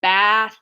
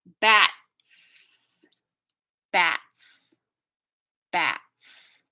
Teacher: bath has that ongoing friction bats has one stop and then friction